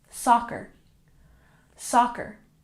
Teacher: soccer has emphasis on the first syllable